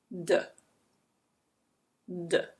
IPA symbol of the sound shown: d